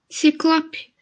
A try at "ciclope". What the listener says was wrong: Isso, ciclope.